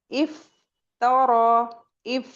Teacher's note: जब हम इफ कहेंगे तो हमारे टू टीथ आके हमारे लिप्स पर लग जाते हैं। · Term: फ का मखरज